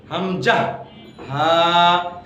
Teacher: তাহলে আমরা জেনে গেলাম যে হলকে শুরু বা কণ্ঠনালীর শুরু হতে দুটি হরফ, হামজা, হা।